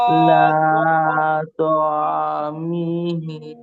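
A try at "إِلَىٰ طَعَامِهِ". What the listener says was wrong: ওয়াকফ করলে ইলা তাআমিহি হ্যাঁ মিহি না ওয়াকফ করলে মিহ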